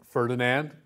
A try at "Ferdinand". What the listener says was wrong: Oh, we wouldn't say the N and D.